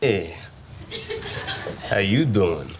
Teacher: remember that the you will become a ya